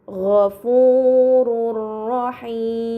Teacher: domahtain dibaca secara melebur tanpa gunah yang dipanjangkan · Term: idgham bila ghunah